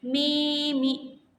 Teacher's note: Nah, yang selanjutnya ada kasrah panjang seperti mi mi. Nah, jadi huruf mi yang pertama itu kan panjang maka disebutnya kasrah panjang